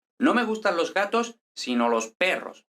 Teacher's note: la conjunción sino es típicamente átona Es decir no tiene acento